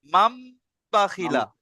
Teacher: নুন সাকিনকে মিমের দ্বারা দ্বারা পরিবর্তন করে একালি পরিমাণ গুণনাসা পড়তে হবে, একে ইকলাব বলে